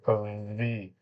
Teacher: উপরে দুই দাঁত নিচের ঠোঁটের সাথে লাগবে এবার একটা ভাইব্রেশনে বাতাসটা বেরিয়ে যাবে